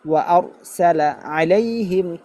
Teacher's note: আবার ওয়া আর সালার স্থানে অনেকে ওয়া আর সলা বলবে, সলা, সিনকে সদ বনায় ফেলবে